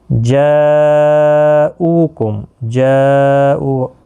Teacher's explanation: جاؤ یہ بڑی مد ہے، مد متصل، چار الف کی مقدار کے برابر کھینچ کر پڑھیں گے